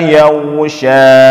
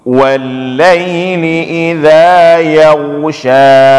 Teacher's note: Jadi ketika kita baca yaghsha itu angkat suara ke atas. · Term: huruf tebal